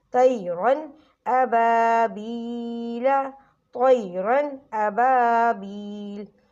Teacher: نون ساکن یا تنوین کے بعد حروف حلقی کے 6 حروف یعنی حمزہ، ہا، عین، ح، غین، خ، ان 6 حروف میں سے کوئی بھی حرف آ جائے تو نون ساکن اور تنوین کی آواز کو غننے کے بغیر جلدی سے پڑھیں گے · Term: اظہار